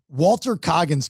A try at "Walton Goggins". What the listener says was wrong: Walton Goggins. Walton Goggins. Walton Goggins. With a G.